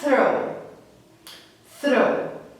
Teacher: Vamos lá, eu vou passar para vocês 10 palavras com o som do TH voiceless, tá? Onde ele é produzido com o deslocamento de ar